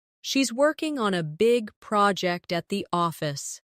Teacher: Stress, working, big, project, and office.